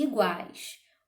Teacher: O A é pronunciado com mais força, nós vamos chamá-lo de vogal, e o U e o I são pronunciados com menos força, nós chamamos, portanto, de semivogais.